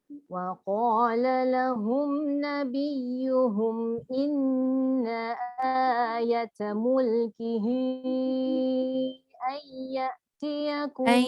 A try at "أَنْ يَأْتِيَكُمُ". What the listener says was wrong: Itu pun dengung tu lebih sikit lagi.